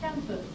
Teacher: We borrow the camp and say campu. And it's spelled in Romanization N here, but the pronunciation is M with campu. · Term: M sound